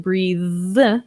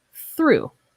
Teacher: So here we have the voiced th, breathe, and unvoiced through.